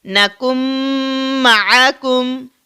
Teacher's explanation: یہ نون ساکن اب کہاں جاتا ہے؟ وہ اس میم کے اندر جذب ہو جاتا ہے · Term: ادغام